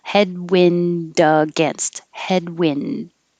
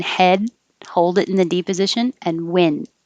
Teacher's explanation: i'm not going to release the d in wind unless there's a vowel after it